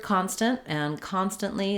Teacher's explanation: they're both stressed on the first syllable con that means the letter O is going to say the ah